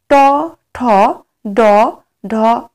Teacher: ট বর্গের যে বর্ণগুলি রয়েছে, সেগুলো উচ্চারণে জিহ্বাগ্র উল্টায় মূর্ধা স্পর্শ করে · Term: মূর্ধন্য